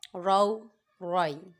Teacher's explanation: دونوں را کو پر پڑھیں گے کیونکہ دونوں را کے اوپر زبر ہے